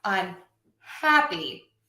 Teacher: If I add a prefix, something before the word, I'm still going to stress the hap.